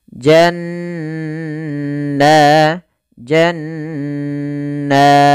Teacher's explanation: lafal jannatin tajri pada lafal jannat kembali ada Nun bertahrukat tasydid maka dinamakan dengan bacaan ghunah cara membacanya menahan suara nunnya